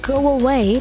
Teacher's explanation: ketika bunyi U atau O plus vowel, maka di tengah-tengah seolah-olah ada huruf bantuan W-nya. Contoh, go away, di antara go dan away ada bunyi seolah-olah ada huruf W-nya.